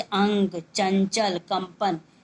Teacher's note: अनुस्वार के उच्चारण में नाक से अधिक सांस निकलती है, और ना या माँ की सी ध्वनि